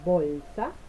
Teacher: el sonido B en bolsa es un sonido oclusivo, oral, bilabial y sonoro